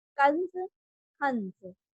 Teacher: pronounce करिए तो नाक से स्वर निकल रहा है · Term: अनुस्वार